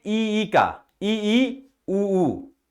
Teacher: हम जब उच्चारण करते हैं ई का, ई ऊ, तो मुख खुलता ही नहीं है हमारा। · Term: संवृत्त स्वर